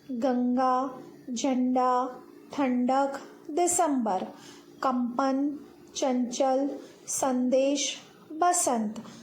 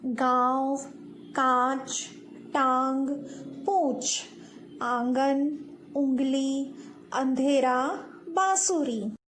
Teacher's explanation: अनुनासिक के उच्चारण में सांस नाक से बहुत कम निकलती है और मुंह से अधिक बाहर निकलती है। · अनुस्वार के उच्चारण में सांस नाक से ज़्यादा बाहर निकलती है और मुंह से बहुत कम।